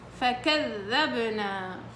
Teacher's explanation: من الناب للناب مسكر عشان يطلع صوت ذال مجهور